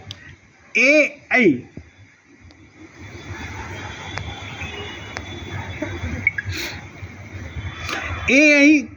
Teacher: संस्कृत में अ और ई मिलकर के ए बनते हैं। अ का स्थान कंठ, ई का स्थान तालु, तो दोनों स्थानों, दोनों स्वरों के संयोग से ए बना, तो कंठ तालव्यौ।